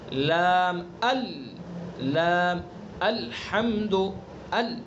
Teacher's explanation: لام کا مخرج زبان کا کنارہ ایک زاحک سے لے کر دوسرے زاحک تک اور اوپر کے دانتوں کے مسوڑے